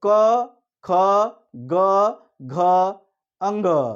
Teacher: ये टोटली कंठ से उच्चारित हो रहा है, ये कहीं से कोई टच नहीं है।